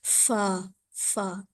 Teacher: आप यह देखें होठ कितने आराम से खुले हु दांतों को सामने के दांतों को आपने नीचे के हिस्से पर लगा के फा अदा करना है · آپ یہ دیکھیں ہونٹ کتنے آرام سے کھلے میں، دانتوں کو، سامنے کے دانتوں کو آپ نے نیچے کے حصے پہ لگا کے فا ادا کرنا ہے، فا، فا، اس طریقے سے۔